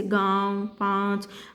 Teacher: उच्चारण में हवा नाक और मुंह दोनों से निकलती है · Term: अनुनासिक